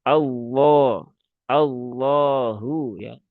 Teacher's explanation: lam yang dibaca taglid atau dibaca tebal. Ini juga sama seperti huruf shad, huruf ro, huruf dod, ya, huruf th ya. Semua dengan cara dinaikkan pangkal lidahnya.